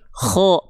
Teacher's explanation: huruf kh ketika fathah itu dibacanya bukan kha, tapi kho, terdengar seperti vokal O